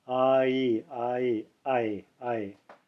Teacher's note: diphthong and it when I say diphthong that means that it's it changes its pronunciation in mid-stream it starts up with the AH and ends with the e